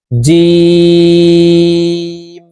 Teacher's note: রূপ ফা ফা এর প্রথম রূপ ফা এর মাজের রূপ জিম জিম হরফ জিহ্বার মধ্যখান থেকে উচ্চারণ করব কারণ জিমের মাখরাজ জিহ্বার মধ্যখান থেকে হবে